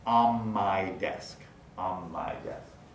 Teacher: the N of on, followed by the M of my, leads to place assimilation